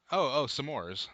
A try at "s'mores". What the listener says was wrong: No. S'mores. One syllable. S'mores. Not s'more. My Bumper Patrol is when people say s'mores. It makes sense because you want some more, but it also has an apostrophe. For cannot, you don't say knit. I cannot do that.